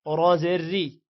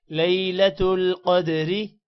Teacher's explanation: را کو باریک پڑھیں گے